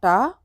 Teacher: टा का उच्चारण स्थान मूर्धा है, तो यहाँ पर टा हो जाएगा।